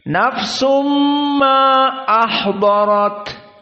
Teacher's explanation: Karena makhrajnya berpindah dari mim yang makhrajnya syafah, nafsum dari nun kepada mim syafah, maka ini maknanya idgham. Adapun bi gunnah di saat masuk kepada mim makhrajnya dari khaysum, dari hidung. Dan di sini 2 harokat. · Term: idgham bi gunnah